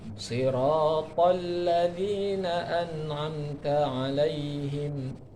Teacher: To-nya tebal, lamnya tipis.